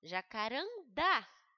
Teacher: A última sílaba é a mais forte. Então, ela foi terminada em A. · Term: oxítonas